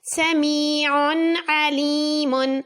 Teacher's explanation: عین کے اوپر 2 پیش، اس کے بعد عین حروف حلقی میں سے ہے، اظہار